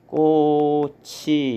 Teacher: 4번은 꽃인데 꽃이 같은 경우에는 받침이 치읓이고 뒤에 오는 이가 형식 형태소에 해당이 되기 때문에 치읓이 이응 자리로 가서 발음이 된다. 그래서 발음을 하면 꽃이 이렇게 발음이 되겠죠. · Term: 연음